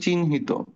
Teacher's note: হয় উচ্চারণটা পরে হয়, নয়ের উচ্চারণটা আগে হয়।